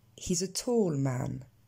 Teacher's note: Ici, on ne va pas réaccentuer man. L'information n'est plus nouvelle. On l'a déjà eue.